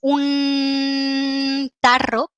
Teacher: no decimos un tarro con alveolar sino que usamos un tarro con la lengua más adelantada